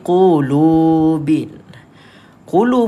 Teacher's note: panjangkan dia dengan kadar dua harakat